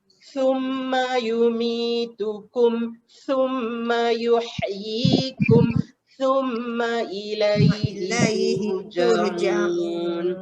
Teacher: Pastikan bila sebut summa tu lidah kena keluar.